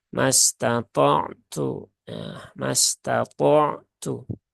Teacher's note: Nah, ini juga wakaf di dua huruf sukun, maka tunaikan ya. Tunaikan sifat tawasud dari ain, kemudian tunaikan sifat syiddah dari ta dan juga hamas dari ta itu sendiri. Jadi bukan mastata'.